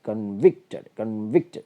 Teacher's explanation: വി എന്നിടത്താണ് stress വരിക